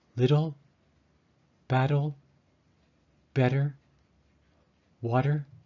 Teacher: It is fairly common to pronounce a T like a D in American English, especially when the T appears in the middle of a word. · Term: voice the T